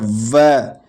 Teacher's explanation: दंतोष्ट होता है व, दांत और होठ से व बोला जाता है